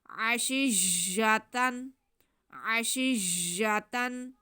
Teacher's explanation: کرنا ہے، سیٹی کی آواز نہیں آئے، لم یلبثوا الا عشیۃً، شین کو یا سے ملا کے پڑھیں گے کیونکہ یا مشدد ہے